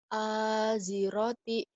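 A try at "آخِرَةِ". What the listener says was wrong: Mana ada titiknya di atas.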